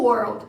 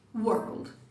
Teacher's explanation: Ele é bem breve. Essa é a característica desse W. Um som de U muito curto.